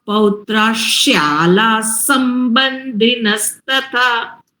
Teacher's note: પૌત્રાહ પછી શ્યાલા છે એનો પણ શકાર થાય અને એ પણ જોડે જ બોલાય